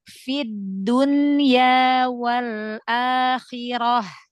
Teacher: Masyaallah lebih bagus. Jadi lam sukun ee jangan diberhenti ya. Jangan syidah ya. Suaranya dialirkan ya.